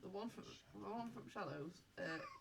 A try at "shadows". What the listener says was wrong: Shadows, not shallows.